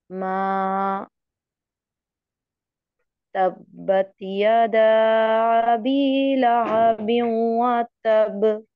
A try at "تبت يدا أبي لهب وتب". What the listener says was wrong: आपका ये कलकला ठीक नहीं है। पहले एक तो मद आप पूरी नहीं कर रही यदा पे। तब्बत यदा अबी लहब व तब, इसको इस पे शदीद कलकला होता है, बहुत ज़्यादा कलकला होता है। ठीक है, क्योंकि इशाद भी आ रही है इस पे। तब इस तरह पढ़ें इसे।